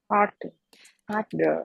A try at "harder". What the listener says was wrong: Ừ, nó là âm ơ ấy, chứ không phải là một cái đuôi đâu. Harder. Harder. Harder. Harder.